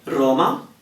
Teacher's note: when R starts a word then we tend to emphasize it more which means if we can roll then we'll roll it more